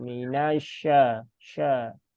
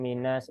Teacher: Tambahkan lagi ya tekanannya biar tidak ngambang antara sin dengan shin ya.